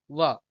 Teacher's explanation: वाह जो ध्वनि है ये दंतोष्ठ है